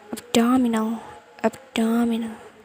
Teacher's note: there is rising intonation when they say abdominal